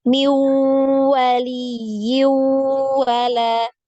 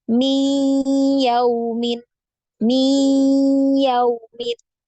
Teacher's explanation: kan tidak secara sempurna ke huruf wau masih ada guna ya ketika kita mengidamkan itu ada gunah ada getaran juga dari hidung Ya ada gunah yang keluar dari hidung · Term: idgham naqis